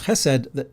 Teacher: That's what chesed means. And when you pronounce chesed, the emphasis is on the che, and it has to be guttural.